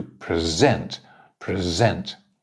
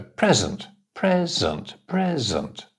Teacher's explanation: is the same one is a verb one is a noun the verb is always stressed on the second syllable the noun is stressed on the first one